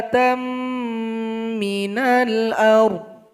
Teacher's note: Dal mesti dipanjangkan 6 harokat atau 6 ketukan baru ditasydidkan kepada huruf ba. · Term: mad lazim mustaqqal kilmi